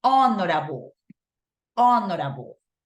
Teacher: hay palabras que inician con H y esta H no es pronunciada en casos en particulares